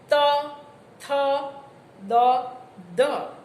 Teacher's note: જીભનો અગ્રભાગ જ્યારે ઉપરના દાંતના પેઢાને સ્પર્શે ત્યારે નિષ્પન્ન થતા ધ્વનિને દંત્ય વ્યંજન કહેવાય.